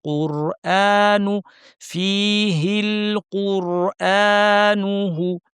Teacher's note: কুরআন এখানে টান আছে হামজা শক্ত করে এবং আলিফ টান সহ। কুরআনু ফীহিল কুরআনুহু, নুহু, নুতে টান না দিয়ে হুতে চলে যাবেন।